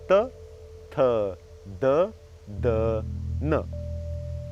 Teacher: the tip of the tongue touching the tooth will only make these sounds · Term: danta